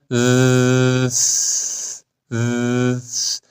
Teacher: خب یعنی چی ارتعاش یعنی انگشت رو بذارید روی حلق و زال رو امتداد بدید لرزش پیدا می‌کنه ارتعاش داره